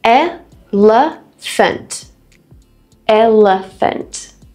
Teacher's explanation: elephant three syllables two schwar sounds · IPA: /ˈɛləfənt/